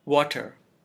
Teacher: It is water. There are two syllables. The first one is stressed, while the second one is unstressed. And the schwa is in the unstressed syllable.